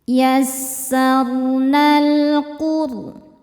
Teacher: Ro sukun dibaca secara tafkhim karena sebelumnya dhammah. Cara bacanya do ditebalkan.